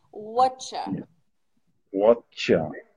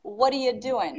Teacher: This is just oral English. We reduce it and link it, and it sounds like whatcha.